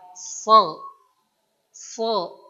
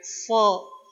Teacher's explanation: Ini fathah yang ditebalkan. So. So. Pangkal lidahnya diangkat.